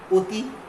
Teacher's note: অ এর পরে ই আছে, মানে সংবৃত, এই জন্য অটা ও হয়ে যাবে